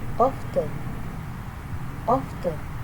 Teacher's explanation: the incorrect pronunciation often, often, is influenced by spelling, where the t is pronounced, resulting in often.